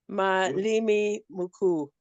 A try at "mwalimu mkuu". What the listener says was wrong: Now you see limi. Not limi. It is mwalimu. It's mwa. Limu. Limu. Yes, mwalimu. Mkuu. You need to work on. You need to work on the You want to bring the U in it. It's U. It's not you. Mkuu.